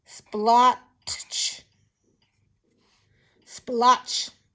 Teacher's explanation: And the T is quite quiet, so you really don't hear it.